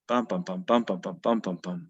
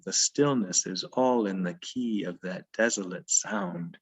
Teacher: These are anapaests that are two short syllables followed by a stressed syllable, two unstressed syllables followed by a stressed syllable. They give it this kind of galloping feel.